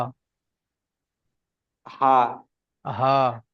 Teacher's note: গলার সামনে থেকে, জবানের সামনের দিক থেকে হা।